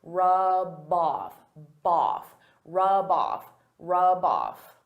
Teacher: Because rub off is a phrasal verb, they go together. I can take that B sound and connect it to the next word, but I have to combine them together. I have to say them as one word.